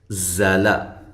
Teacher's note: زلا، زا کو زور کے ساتھ، سختی کے ساتھ ادا کرنا ہے، لام کو باریک پڑھنا ہے، لمبا بھی نہیں کرنا۔